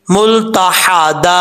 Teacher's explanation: वक्फ करते हुए एक ज़बर को अलिफ से बदल देंगे, यहाँ पर दो ज़बर के बाद अलिफ आ रहा है तो एक ज़बर को अलिफ से बदल देंगे।